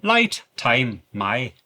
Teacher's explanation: the I sound in words like light and time is flattened making the sound a bit shorter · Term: flat I sound